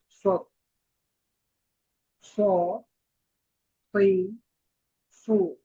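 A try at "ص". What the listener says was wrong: আচ্ছা, তো আপনার উচ্চারণে সদ আর সিনের পার্থক্য বোঝা যাচ্ছে, তবে সদের উচ্চারণটাকে আরেকটু ভালো করা দরকার। তো এটা স, সই, সু, আর সদ, সিন, জা, এই তিনটার ক্ষেত্রে যেহেতু সফির সিফত।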